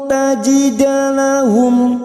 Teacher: mim sukun bertemu Nun Idhar syafawi artinya terang di bibir mim sukun dibaca jelas tanpa mendengung